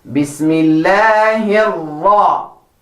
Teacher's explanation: Ra with fatha, thick, gives power in your sound and looks really nice in recitation.